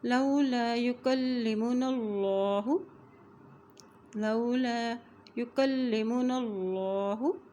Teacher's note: اللہ کے نام سے پہلے زبر آ گیا ہے تو یہاں اللہ کا نام موٹا ادا کیا جائے گا